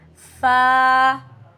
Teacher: اوپر کے دانت نیچے کے ہونٹ پر جب آتے ہیں تب ہمارے پاس فا ادا ہوتا ہے. اپر teeth on lower lip, it's light letter.